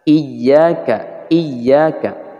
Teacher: Di sana terdapat tasydid pada ya, sehingga harus ada penekanan.